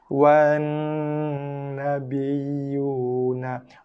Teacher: Terus pergi kepada nun sabdu Tekan dulu pada nun, dengungkan, lepaskan dengan baris nun.